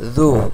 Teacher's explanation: জালকে একেবারে পাতলা করে উচ্চারণ করা